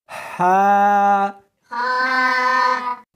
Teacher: اس کو حلق میں سے نکالنا ہے اور ساتھ میں ہوا بھی ہونی چاہیے، ہا۔ ہا نہیں پڑھنی بلکہ اس کو حلق میں سے نکالنا ہے، سینے میں سے نہیں نکالنا، ہا۔